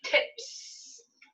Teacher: tip ends with a voiceless sound so i'm going to say tips